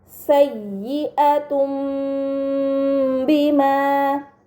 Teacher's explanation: dibaca mim dengan gunah yang dipanjangkan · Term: iqlab, iklab